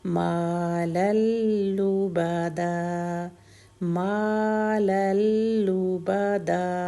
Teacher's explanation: ما میم کی حرکت بھی 2 اور لبدا میں بھی دال کی حرکت بھی 2